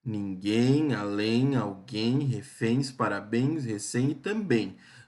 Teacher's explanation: As palavras oxítonas são aquelas que a última sílaba é mais forte